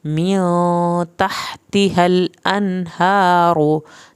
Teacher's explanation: हा को हल्क से पढ़ना है, तहतिहल, ये हा अंदर से पढ़ा जाएगा।